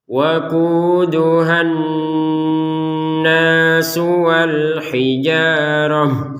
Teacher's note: langsung dimasukkan kepada tasydid sehingga panjangnya dari ha ini hilang. Waquduhan nas, jadi berganti kepada dengung.